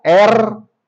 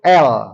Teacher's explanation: lam dan ro sama-sama juga huruf lisan yang satu bergetar R yang satu l tidak bergetar nempel lidah ke langit-langit atas